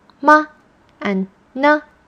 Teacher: So those 2 words have no tone and they're just pronounced lightly. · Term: neutral